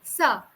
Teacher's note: when I'm pronouncing sa, the front of my tongue, the tip of my tongue is being used.